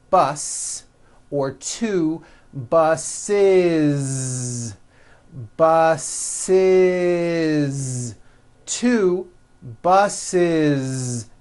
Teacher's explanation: if you make it plural you're going to add the ending is with a voiced Z